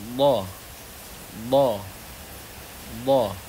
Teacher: bagian yang kena, yaitu sisi lidah bertemu gigi geraham, itu memanjang dari belakang ke depan. Boleh di bagian kanan lidah atau sebelah kiri atau kedua-duanya. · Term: istitalah